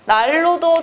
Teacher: 난로도 대각선 보시면 리을이 아닌 거에 영향을 줘서 리을로 만들어 버렸죠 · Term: 유음화